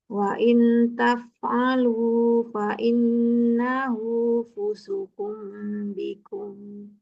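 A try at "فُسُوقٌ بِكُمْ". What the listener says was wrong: Sinnya panjang atau tidak, Ibu? Fusukum, sin dhamma, panjang ya. Fusukum, karena sinnya dhamma ketemu wawu, maka di situ harus panjang. Fusukum bikum.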